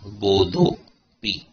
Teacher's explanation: विसर्ग के पूर्व में अ है और सामने अ है, तो क्या हो जाएगा, विसर्ग का ओ